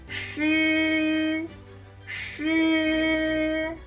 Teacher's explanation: The tip of the tongue rolls up very close to the roof of the mouth, producing sh with a weak airflow, similar to sh in the English word shirt.